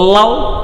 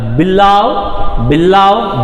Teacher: ನೀವು ನೋಡ್ಬೋದು ನಮ್ದು ಆ ಕಡೆ ರಿಮ್ಸ್ ಏನಿದೆ ಅಲ್ಲ, ನಾಲ್ಗೆ ರಿಮ್ಸ್ ಆ ಕಡೆ edges. The air from the lungs escapes along the sides of the tongue. Sides ಅಲ್ಲಿ ಬರುತ್ತೆ ಇಲ್ಲಿ ಅಂದಾಗ ಲ ಸೌಂಡನ್ನು ಈ ರೀತಿ ಇದೆ IP ಸಿಂಬಲ್ಲು.